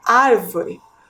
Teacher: observem aí na tela ao realizar a pronúncia da palavra árvore podemos perceber que a sílaba mais forte é a antepenúltima ar